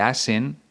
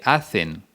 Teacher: el seseo es decir convertir la ce en una s por ejemplo cuando dice a sen en vez de hacen del